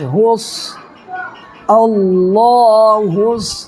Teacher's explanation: صاد پر تشدید ہے، صاد پر جو ہے صاد کو دو مرتبہ پڑھیں گے، تشدید والے حرف کو دو مرتبہ پڑھا جاتا ہے۔